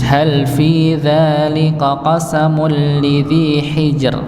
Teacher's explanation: Berikutnya pada ayat yang kelima ini ra-nya dibaca tipis.